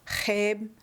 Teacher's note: The back of the tongue with saliva on top is placed near the back roof of your mouth. The sound is created by friction between the two. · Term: X wedge